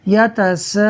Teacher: ہم پڑھیں گے یتساءلون، میں نے 6 حرکات کے برابر کھینچا ہے، آپ 2 حرکات کے برابر بھی کھینچ سکتے ہیں، 4 کے برابر بھی کھینچ سکتے ہیں۔ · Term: مد عارض